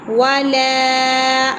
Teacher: لام کے آگے الف مدہ ہے، اسے ایکل کے برابر کھینچیں گے، زیادہ نہیں